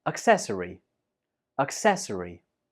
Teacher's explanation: This word has 4 syllables. Accessory, and the stress is on the second syllable.